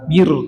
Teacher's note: Bir itu tipis karena huruf sebelumnya huruf kasrah.